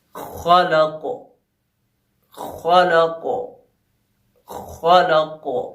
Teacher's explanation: دیکھیں کیونکہ خلق میں جو کاف ہے وہ آخر میں آیا اور ہم نے کاف کو ساکن کیا، تو کیونکہ کاف آخر میں آیا ہے اس لیے یہاں پہ جو ٹکراؤ ہے وہ زیادہ ہوگا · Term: قلقلہ کبریٰ